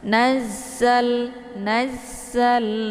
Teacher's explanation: karena Za ini sifatnya adalah safir Jadi kalau safir itu anginnya itu lebih jelas kalau dibandingkan dengan Hames Nazar Naza ini lamnya dibaca jelas ya